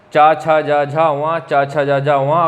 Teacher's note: अगर इन्हें आप बोलेंगे तो जीभ जो है आपके ऊपरी छत का पिछला वाला हिस्सा स्पर्श कर रही है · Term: तालव्य